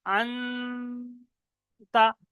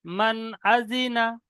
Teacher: নুনের আওয়াজটা নাকে তুলে গুণনা করে পড়া হচ্ছে